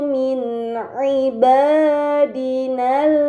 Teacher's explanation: Kemudian pada kata min ibadina terdapat nun sukun yang bertemu dengan huruf ain, ini dinamakan izhar halqi, maka nun sukun harus dibaca secara jelas